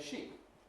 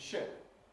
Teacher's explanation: You can see now why this is not altogether a perfect minimal pair for demonstrating the English vowel contrast between E and I. Because in this pair, in fact, the durational difference is not very great, because we have the pre-fortis clipping effect